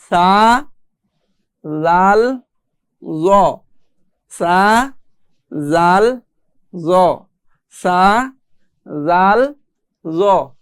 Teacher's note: জিহ্বার আগা সামনের উপরের যে দাঁত আছে এই দাঁতগুলোর আগার সাথে, জিহ্বার আগা এবং দাঁতের আগা একসাথে লাগিয়ে পড়তে হয়